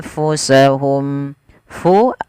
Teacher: alirkan nafas, sifat hamasnya mengalirnya nafas